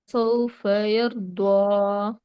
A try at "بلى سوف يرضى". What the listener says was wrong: ولا سوف. வாவோட முக்கியம் தேவை. வாவ சவுண்ட் தேவை.